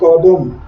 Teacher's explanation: এবং প্রথমে যে কটা আছে সেই কটা কই থাকলো, আর শেষের যে মটা সেই ময়ের অটা এখানে লুপ্ত হয়ে গেল